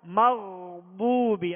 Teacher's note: آگے ضاد ہے، ضاد کو پر پڑھیں گے، واو مدہ کو ایک الف کی مقدار میں کھینچ کر ادا کریں گے